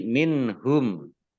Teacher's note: nun sukun bertemu dengan huruf ha, bacaan izhar, dibaca jelas